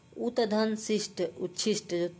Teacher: त और स आधा च और छ बन जाते हैं